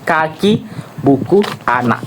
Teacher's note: Belakang lidah menyentuh velum, langit lunak. Udara tertahan di bagian belakang, di bagian sini. · hambatan itu terjadi di bagian belakang mulut. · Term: hambat dorsovelar tak bersuara